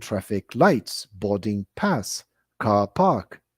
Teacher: Usually we tend to stress the first word rather than the second